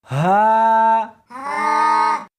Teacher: اس حرف کو سینے کے اندر سے نکالنا ہے